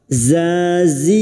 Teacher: huruf zain makhrajnya ada pada torful lisan, sejajar gigi seri bawah